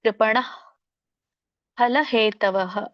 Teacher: ನೀವು ಹ ಅಂತ ಪೂರ್ಣ ಉಚ್ಚಾರಣೆ ಮಾಡೋಹಾಗಿಲ್ಲ ಸ್ವಲ್ಪ ಪ್ರಮಾಣದಲ್ಲಿ ಹ ಉಚ್ಚಾರಣೆ ಬರಬೇಕು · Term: ವಿಸರ್ಗ